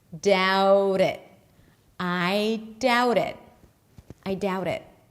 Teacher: The T becomes a flap T because it's between two vowels once I connect it to the next word.